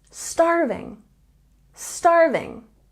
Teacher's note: We have a stress here on the first syllable.